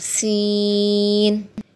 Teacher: سین زبان کی نوک اور اوپر کے دونوں دانتوں کے کناروں سے لگے گی تو سین ادا ہوگا